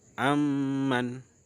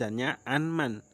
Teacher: Amman. Meskipun tertulis anman. Namun karena ini adalah bacaan idgham bighunah , maka bacaan ini digabungkan ke dalam amman.